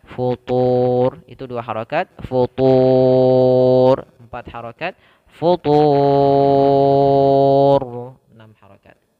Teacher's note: Mad arid lis sukun panjangnya adalah boleh 2 harokat, boleh 4, dan boleh 6.